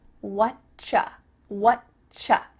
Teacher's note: we've cut out completely the word are, and the word you just becomes cha.